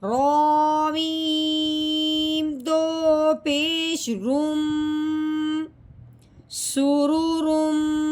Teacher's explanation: یہاں پہ میم کا غنہ ہوتا ہے کہ ہونٹوں کو بند کرنا ہے، اوپر والا ہونٹ اور نیچے والا ہونٹ ملاتے ہوئے اور ناک میں سے آواز نکالنی ہے